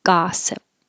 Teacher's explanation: The vowel is ah. Looks like an O, but sounds like ah.